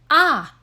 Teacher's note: ah is a vowel similar to ah in mom but more open